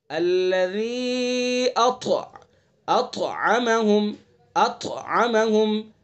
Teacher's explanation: طا کو پر بھی پڑھیں گے · طا کے اندر قلقلہ بھی کریں گے